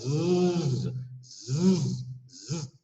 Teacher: Kwa hivyo ikiwa ni konsonanti kwa mfano z, unahisi kwamba z inasababisha mtetemeko wa nyuzi za sauti. Kwa hivyo hiyo tunaita sauti guna.